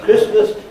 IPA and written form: ˋkrɪsməs (Christmas)